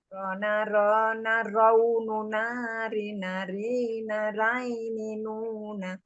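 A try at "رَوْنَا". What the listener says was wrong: Jangan raini. Raini atau roini, Bu? Roini.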